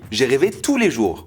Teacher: Vous avez vu ? J'ai toujours pas prononcé le S.